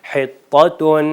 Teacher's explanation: طیبات، حطۃ، یہاں پر 2 تا ہیں، ایک طا جس کو توئی کہتے ہیں اور ایک 2 نقطے والا تا، تو اس کا خاص خیال رکھیں کہ پہلے والا جو طا ہے وہ موٹا پڑھا جائے گا اور دوسرا والا ہے جو وہ باریک اور نازک اور آرام سے، جو کہ اردو میں ہم تلفظ کرتے ہیں۔